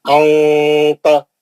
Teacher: नून की आवाज से छुपा के इख्फा करेंगे आप